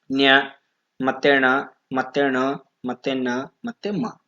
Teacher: ಮತ್ತೆ ಆರನೇ point ಅನುನಾಸಿಕಗಳು ಸೋ ಅನುನಾಸಿಕಗಳು ಅಂದ್ರೆ ನಾನು ಆಗಲೇ ಹೇಳಿದ ಹಾಗೆ ನಾಸಿಕದ ಅಂದ್ರೆ ಮೂಗಿನ ಸಹಾಯದಿಂದ ಹುಟ್ಟುವ ಅಕ್ಷರಗಳು